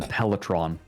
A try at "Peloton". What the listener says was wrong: Peloton? Yeah, Peloton. There's no R.